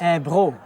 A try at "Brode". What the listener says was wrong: Et il y a un tas de monde qui dit Bro, mais c'est pas vraiment ça. Ça vient B-R-O-D-E. C'est comme brodé, comme ça. En français.